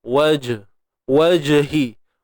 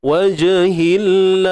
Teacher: Huruf jim ni kita kena lantun dia lah. Qalqalah sughra.